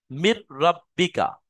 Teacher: মির রাব্বিকা আর নুনটা এই র সাথে মিলে যাবে। কিন্তু গুন্নাও হবে না। বিনা গুন্না তাড়াতাড়ি পড়তে হবে।